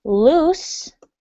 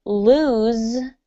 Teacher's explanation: in the word loose, you have an S sound. Okay, the S. And in the word lose, you actually have a Z sound